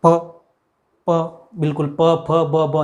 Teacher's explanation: जैसे प वर्ग जो है वो होठों के बगैर बोला ही नहीं जाता है।